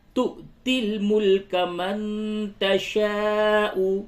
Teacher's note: یہ واو کے اوپر حمزہ ہے، اس جگہ پہ جھٹکا ہوگا